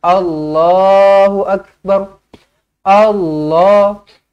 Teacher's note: Kita tak ada pun cakap kita nak tebalkan perkataan Allah tu, sampaikan A tu kita jadi O.